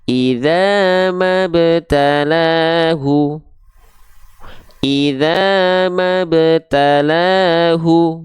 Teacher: kita berhenti maka ini adalah qolqolahnya qolqalah sugro qqolah Sugra itu qolqola dengan pantulan yang kecil atau ringan saja Ah qolqola itu artinya memantul atau pantulan bahasa kitanya Sura itu